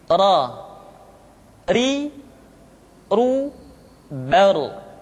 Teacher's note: tidak waidqala atau waid qa yadzakar tidak yadzakar yadzakar berikutnya adalah huruf ro diucapkan dengan menyentuhkan punggung lidah dengan langit-langit